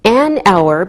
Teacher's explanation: We say an hour because we don't pronounce the H, so it sounds like a vowel sound.